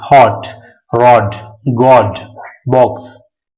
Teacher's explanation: यहां पर ओ का जो प्रोनाउंसिएशन है इसमें हमारा होंठ जो होते हैं वो गोल होते हैं